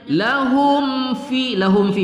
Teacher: mim sukun bertemu Fa tidak kita dengungkan pada izhar syafawi